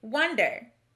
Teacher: again here's our next word this word is wonder notice that we pronounce the o in the first syllable more like a short u rather than o this is the schwa sound again so which column does the